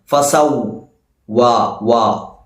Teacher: വാവിന്റെ മഖ്റജ് 2 ചുണ്ടുകൾ, 2 ചുണ്ടുകൾ മുന്നിലേക്ക് കൂർപ്പിച്ചുകൊണ്ട് പാരായണം ചെയ്യണം. ഫസൗ വാ, വാ, ഇങ്ങനെ വാ എന്നല്ല.